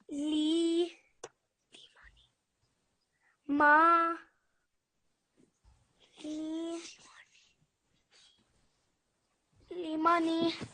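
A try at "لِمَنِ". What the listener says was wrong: You said this really, really nicely. Limani. and your timing was really good. When you're saying the individual letters, you have to make sure you keep that short timing as well. Pronunciation of letters was brilliant. You just need to keep your timing short. So li-ma-ni, li-ma-ni.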